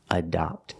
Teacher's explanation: The first syllable is a schwa, closed sound, adopt. And the second syllable is the open sound, ah, like hot and stop.